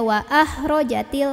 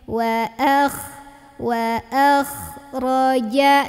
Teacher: kayak ada ngorok-ngoroknya ya, enggak terlalu bersih tapi ada kotor-kotornya. Wa akhraja. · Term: huruf kho